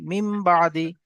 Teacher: এবং নুন সাকিনের পরে বা এসছে, তাই নুন সাকিনকে মিমের দ্বারা পরিবর্তন করে একালি পরিমাণ গুণনা করে পড়তে হবে, একে ইকলাব বলে।